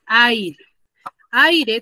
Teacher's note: también tengo vocal abierta más vocal cerrada ninguna está tildada entonces las uno hay y forman una sola